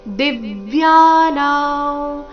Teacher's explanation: ದಿವ್ಯ ದಿ ಮೇಲೆ ಆಘಾತ ಯ ಮತ್ತೆ ನ ದೀರ್ಘ ಅನುಸ್ವಾರದ ಉಚ್ಚಾರಣೆ ನಾಸಿಕವ ರೀತಿ